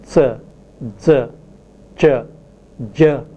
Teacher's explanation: the articulators do not separate suddenly as for plosives like p, b, but they separate slowly, so that when they separate, the sounds produced are like fricatives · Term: Affricates